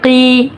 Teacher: قاف حرف مستعلیہ ہے، اس کو پر پڑھیں گے۔ قی یا مدہ ہو رہا ہے، 1 الف کے برابر کھینچیں گے۔